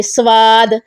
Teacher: سواد، اس کو سواد نہیں پڑھنا، ٹھیک ہے، اس کو باریک نہیں کرنا، یعنی اس میں واؤ کا ٹچ نہ آئے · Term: موٹا